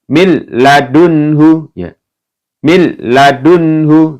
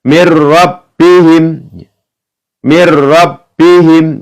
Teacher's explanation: ketika ada nun sukun atau tanwin ya bertemu dengan huruf lam, ra, ya maka dibaca masuk dengan tidak mendengung. Langsung. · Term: idgham bila gunnah